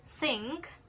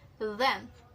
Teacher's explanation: th is voiceless, the is voiced, and they are same in place and manner of articulation as well, which is dental fricatives. So dental fricatives is when the tip of the tongue is located behind the upper teeth, and it is also creating a friction, a hissing sound, and the airstream isn't completely blocked, so the sound can continue.